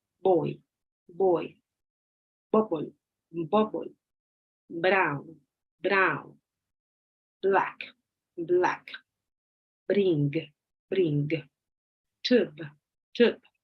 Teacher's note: It says by saying these words, hold a piece of paper on your hand in front of your mouth to make sure you are voicing the consonant and not using a puff of air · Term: B sound